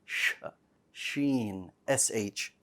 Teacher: the Sheen should not be pronounced like a ch sound, ch. It should be a sh, Sheen, sh sound.